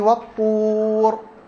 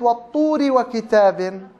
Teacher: يبقى لو سئلتي عن حكم الراء في والطور قولي حال الوقف حكم التفخيم لأنها ساكن بعد ضم، لكن حال الوصل مكسورة فحكمها الترقيق